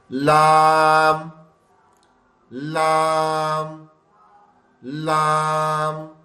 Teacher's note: सामने के जो हमारे ऊपर के दांत है ना ऊपर वाले दांतों की जो जड़ है वहां पर जबान की नोक टच होती है।